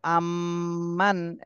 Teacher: এখানে নুন সাকিনের পরে ইজহারের হরফ হা এসেছে, এজন্য এই নুন সাকিনে স্পষ্ট করে পড়তে হবে, গুণনা করা যাবে না